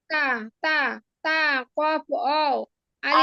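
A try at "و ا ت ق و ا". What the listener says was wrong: আলিফটা বাদ যাচ্ছে আপু, এই যে মাঝখানে আলিফটা বলেন নাই। ওয়াও আলিফ তা কফ ওয়াও আলিফ।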